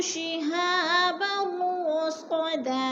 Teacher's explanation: यजिद पे दाल कलकला है, दाल को हिलाकर पढ़ेंगे और लहू पे उल्टा पेश है, थोड़ा सा खींच कर पढ़ेंगे। शिहाबर, दो ज़बर तनवीन और रा मुशद्दद है, इदगाम हो रहा है, मुदगम करके यानी सख्ती से जमा कर पढ़ेंगे। रसदा, दो ज़बर तनवीन को वक़फ़ की सूरत में एक ज़बर में बदल कर पढ़ेंगे।